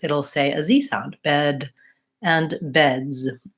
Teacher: when I have a voice sound like a D sound bed when I add the S it'll say a Z sound